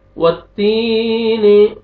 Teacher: वाव पे लिप्स को राउंड में लेके जाना है अच्छी तरह ताकि वाव अदा हो